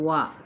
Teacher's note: واو ہونٹوں کی نا تمام گولائی کے ساتھ وا، پہلے ہونٹ گول کریں پھر کھولیں۔